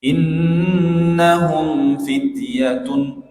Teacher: Jadi gunnahnya tidak sempurna, mimnya ya itu dilekatkan dengan sempurna makhrajnya. Bibir ya tertutup dengan sempurna. Innahum fityatun gitu.